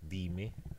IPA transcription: dime